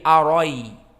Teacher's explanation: ra-nya tetap fathah dan hamzah dihilangkan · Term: isqatil hamzah atsaniyah